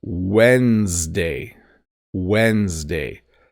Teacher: a silent B Wednesday so this is a weird one because the order of the D and the N get flipped when you say it